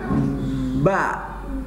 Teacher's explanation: kalau ba dasarnya atau makhrajnya adalah bibir atas dan bibir bawah ketemu. Jadi bibir atas, bibir bawah ketemu.